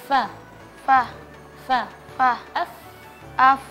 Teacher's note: Naf ada ada anginnya ketika melafalkan huruf fa ada hamsnya